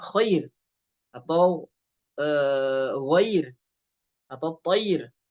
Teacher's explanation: Ro sukun, sebelumnya fathah, di sini ada di kondisi tafkhim. Tapi berubah menjadi tipis, ya. Karena di tengahnya adalah huruf lin.